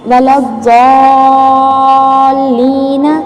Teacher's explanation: اس کی مقدار طول یعنی کہ اس کو 6 حرکات یعنی کہ 3 الف کے برابر، 6 حرکات یعنی 3 الف کے برابر اس کو لمبا کر کے پڑھنا ہے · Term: مد لازم کلمی